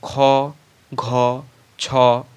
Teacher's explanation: যেসব ধ্বনি উচ্চারণের সময় বাতাসের চাপের আধিক্য থাকে তাদেরকে মহাপ্রাণ ধ্বনি বলা হয়